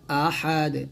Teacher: এই দালটা সাকিন করলে কলকলা করতে হবে